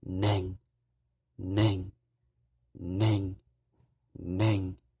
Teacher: I call this the low breathy tone because you're kind of aspirating a little bit when you're saying the gtone uh so practice that one a